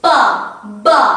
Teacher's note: this is bilabial. It involves the 2 lips